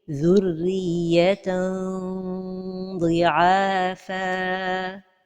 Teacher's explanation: Notons que dans le cas des lettres emphatiques comme as-sad, ad-dad, at-ta ou adha, la ghunna reste toujours emphatique parce qu'il y a une partie de la langue qui reste toujours collée au palais supérieur